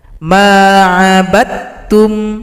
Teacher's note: Di sini huruf dal telah gabung pada huruf ta, idgham mutajanisain. Tidak dibaca lagi karena dia telah bergabung pada huruf ta.